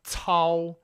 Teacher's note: first tone is a single, relatively high sound.